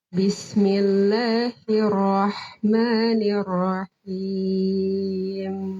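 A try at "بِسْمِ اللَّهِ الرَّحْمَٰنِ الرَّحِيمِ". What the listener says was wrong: Lumayan, ada dikit.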